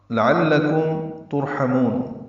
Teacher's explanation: لام دونوں باریک ہے، عین وسط حلق سے ادا کریں گے، کاف باریک ہے ، میم ساکن پہ اظہار شفوی ہوگا، لعلکم ترحمون میں را